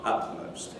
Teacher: you have the alveolar T replaced by bilabial P as a result of assimilation, and so you have utmost.